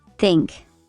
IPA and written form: θɪŋk (think)